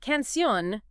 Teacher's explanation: the stress is on that last syllable